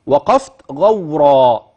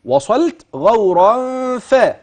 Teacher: اذا عند وصل غورا بالفاء تاتي الغنه